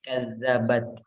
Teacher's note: Jadi ada sedikit udara yang keluar ya di huruf ta itu.